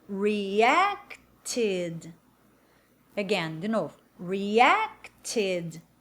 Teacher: Veja que o tid, ele não tem força.